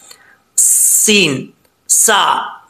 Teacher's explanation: सीन पढ़ते वक्त सीन में सीटी आएगी, अगर सीटी नहीं आएगी तो समझ लीजिएगा सीन सही तरीके से अदा नहीं होगा।